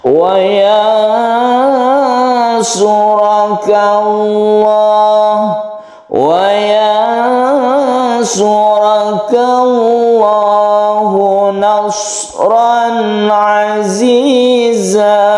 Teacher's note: Wa yansura ini kita baca nun bertemu dengan shad ikhfa namanya. Kita baca samar ya. Kita baca samar-samar. Dan di sini karena dengung kita ada kesempatan untuk melakukan atau memberi nada, memberi cengkok di sini.